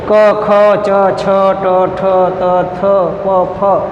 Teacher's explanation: જે ધ્વનિઓનો ઉચ્ચાર કરતી વખતે નાદતંત્રીઓનું કંપન ઓછું થાય તેને અઘોષ વ્યંજન કહે છે.